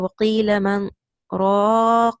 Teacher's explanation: The sakta sign in the mushaf will be written by a small scene sign like this. There is izhar of the noon as-sakina since the sakta prevents idgham.